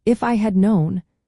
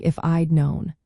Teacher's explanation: the past perfect form had is often pronounced as /he'd/ or contracted to d